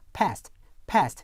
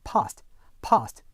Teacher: 일반 미국 영어와 영국 표준 영어의 모음 차이 그 두 번째 한번 알아볼 텐데요. 일반 미국 영어에서는 에로 발음되는 모음이 영국 표준 영어에서는 아로 발음되는 경우가 있습니다.